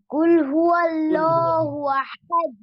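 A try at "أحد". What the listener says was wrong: আহাদে, আহাদে, দাল কলকলা হবে। কুল হুয়াল্লাহু আহাদ।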